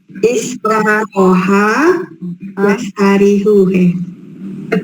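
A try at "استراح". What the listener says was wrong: Istaroha, panjang ya. Istaroha yastarihu.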